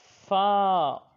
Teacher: اوپر کے دانتوں کا کنارہ اور نچلے ہونٹ کا تر حصہ